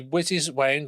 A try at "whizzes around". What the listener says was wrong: You said whizzes wound. Whizzes wound.